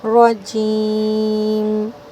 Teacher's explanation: آخر میں میم کی آواز چھپتی ہے تو اس کو تھوڑا سا واضح کریں گے